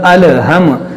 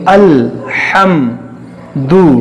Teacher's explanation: لام، یہ حروف قلقلہ نہیں ہے تو ہم نے یہاں پہ قلقلہ نہیں کیا ، جیسے مطلب الہم، اس طرح ہم نے نہیں پڑھا، اس